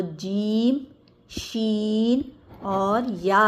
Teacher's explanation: जब ज़बान का दरमियानी हिस्सा ऊपर तालू से लगे तो जीम, शीन और या अदा होंगे।